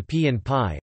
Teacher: Initial voiceless stops, like the p in pie, are aspirated, with a palpable puff of air upon release